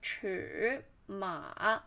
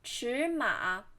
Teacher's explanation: there's two third tone and you should pronounce the first one in second tone